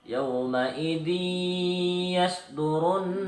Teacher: huruf zal berharokat kasrah tanwin bertemu huruf ya bertasjid, dibaca masuk dengan dengung dan ditahan sampai 3 harokat. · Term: idgham bi hunnah